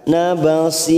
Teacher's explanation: Syir mat arid disukun 4 harokat kita panjangkan.